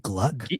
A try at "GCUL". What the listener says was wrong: It's GCUL. GCUL. The G and L are not next to each other.